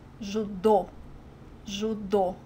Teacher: the trick here is to put the emphasis on the last syllable